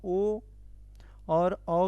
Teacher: कंठ ओष मतलब कंठ और ओष दोनों की सहायता से बोला गया और यह भी संयुक्त स्वर ही है हमारे संयुक्त संयुक्त स्वर